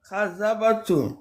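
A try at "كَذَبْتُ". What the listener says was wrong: Soukoun sur la dernière. B. Kadhabtu. Et le dernier, c'est ça. Kadhabtu.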